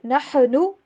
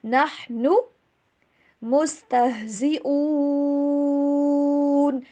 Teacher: انما نحن، بہت سے اسٹوڈنٹس ایسے پڑھ لیتے ہیں نحن، ایسی آواز نہیں آنی چاہیے. ہا کے اوپر آواز بالکل ہلنی نہیں چاہیے